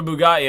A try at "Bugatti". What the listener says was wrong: You had to leave out the A, like there's no A in it. It's a space. It's not an A. It's gotta be like a Bugatti.